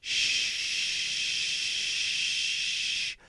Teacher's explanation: it's going out through your teeth which is in part what's making that rushed Shh sound